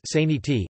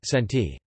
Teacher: In unstressed syllables, which speakers of American English would realize as a schwa, speakers of Indian English would use the spelling vowel, making sound as saniti instead of senti. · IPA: [ˈsæniti]